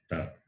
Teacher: Ta is dental and alpa prana.